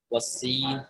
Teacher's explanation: سین میں کیا ہوتا ہے نا کہ ایک سیٹی سی آواز ہی نکلتی ہے سیٹی کی طرح